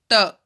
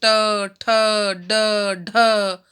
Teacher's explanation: ट वर्ग का उच्चारण स्थल मूर्धा है। मूर्धा माने हमारे जो देखो बोलो, ट, जीभ टच हुई, हमारी मूर्धा माने जीभ, तो वो जीभ के साथ टच होता है।